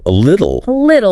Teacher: That T in the middle between vowels, it often softens to sound like a D.